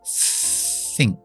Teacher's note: Simplemente tienes que soplar sin activar la voz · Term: th sin voz